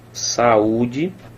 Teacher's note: O U está formando hiato. Esse U é tônico.